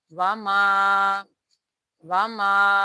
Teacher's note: یہاں پر الف مدہ کا قاعدہ ہو رہا ہے اور ہم نے ما کو 2 حرکات کی مقدار کھینچ کر پڑھنا ہے